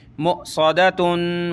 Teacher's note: یہاں حمزہ ساکنہ ہے, ٹھیک ہے, واو کے اوپر ہے لیکن حمزہ ساکنہ, جھٹکا دیں گے. میم حمزہ پیش مو, صاد زبر صا, مو صا, دال زبر دا, مو صدا تا دو پیش تن, مؤصدتن وقفا مؤصدہ.